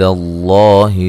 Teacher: لفظ اللہ کو موٹا ادا کرنا، اس سے پہلے حرف پر زبر ہے